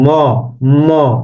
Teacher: দেখেন নাক একটা ইয়া হচ্ছে কিনা নাকে ভাইব্রেশন হচ্ছে তো নাসিক্য মুখ গহবরে গহবরের পাশাপাশি নাসিকা বা নাকের ছিদ্র বাতাস বেরেও ধ্বনি উৎপন্ন হয়